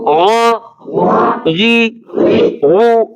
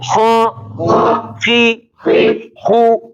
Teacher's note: د بر حصې نه چې کومې د ژبې اخر ته نږدې ده، د دغې حلق نه نقطې والا غین او خا ادا کېږي